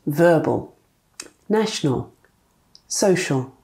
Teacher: Another situation where a schwa might appear is towards the end of a word when the word ends in L.